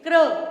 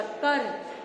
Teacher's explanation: तो इस तरह हम इसको क्या बोलेंगे, क्या प्रोनाउंस करेंगे, क्र, र पूरा, र के साथ अ की आवाज आ रही है लेकिन क के साथ नहीं। अगर क के साथ क पूरे की आवाज आ रही तो कर बन जाना था, र भी पूरा क भी पूरा, कर, लेकिन ये बना क्र, क आधा र पूरा, क्र, क्लियर।